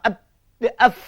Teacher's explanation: Di antara anak-anak, angin mesti dilepaskan. Kerana bersifat huruf hamas. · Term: huruf fa